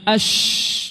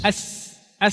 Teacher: Artinya tafasyi itu intisyarul hawa, maksudnya udara di mulut dia menyebar, dia meniup ke semua sela-sela mulut